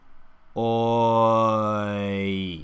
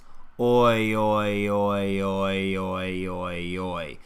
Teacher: The teeth stay separated the whole time, and we have the lips starting rounded forward. Oi. And as the lips relax back, the tongue, which has started low, rises up in the center. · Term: oi diphthong sound